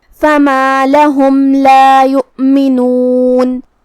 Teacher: لہم لا، کلمت یؤمنون میں یہاں واو پہ حمزہ ہے، تو ہمیں حمزہ کو ظاہر کرنا ہے اور ہم حمزہ کو حلق کے نیچے والے حصے سے ادا کریں گے۔ آخری میں نون پہ رکیں گے تو اس پہ جزم سے رکیں گے، تو ہمیں نون کو ظاہر کرنا ہے۔